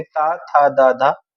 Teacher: तो हमारी जीभ दांत को टच कर रही है